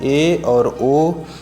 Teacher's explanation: अर्ध समृत यानी कि हाफ क्लोज वाले में 2 आते हैं, ए और ओ